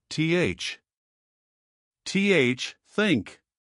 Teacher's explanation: The first is the voiceless th, where only air comes out, no vibration in your throat